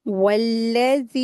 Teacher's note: मद्दे जायज का रूल अप्लाई करेंगे, चार हरकत खींच के पढ़ेंगे